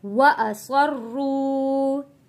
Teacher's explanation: واو ساکن سے پہلے پیش ہے، تو یہاں پہ ہم حروف مدہ ہے، ایک الف کے برابر کھینچ کر پڑھیں گے